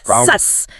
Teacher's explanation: the s sound normally doesn't use vocal cord vibration. It's just air hissing through the teeth.